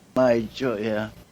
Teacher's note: she left off the M on the end of my choya